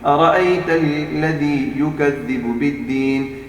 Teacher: یہاں پر ارائی نہیں پڑھیں گے کیونکہ صرف زبر ہے, کھڑی زبر تو نہیں ہے نا, ہم اس کو لمبا نہیں کریں گے